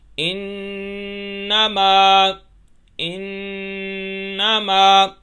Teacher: نون کی آواز ناک میں تھوڑی دیر روک کے رکھنی ہے اور اس کو آواز کو گھمانا ہے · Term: غنہ